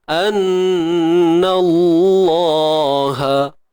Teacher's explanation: Kalimah Allah tebal. Hanya pada lam sahaja. Nun tidak.